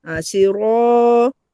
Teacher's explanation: Ro dibaca tebal dan mad asli alif